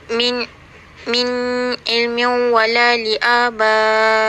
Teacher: Contoh yang diberikan adalah min ilmin yang menunjukkan jelas tanpa dengung.